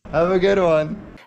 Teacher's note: The D in good is unreleased, meaning that the tongue tip doesn't actually release from the alveolar ridge until the W oo, is already pronounced. The D links to the W word in one to sound more like dwan.